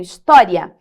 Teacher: Esse I é mais fraquinho e o A é mais forte. Então, é um ditongo crescente.